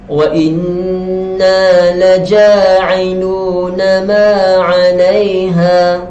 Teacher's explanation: Okey, kita teruskan dengan ayat seterusnya. Wa inna, nun yang bertanda sabdu, yakni bertanda syaddah, dibaca dengan dengung 2 harakat.